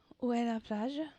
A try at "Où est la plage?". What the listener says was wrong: Over enunciated because she wants to sound like a French person. Où est la plage? No, sound like an American speaking French. Don't sound like a Lexington girl trying to sound like a French person speaking French.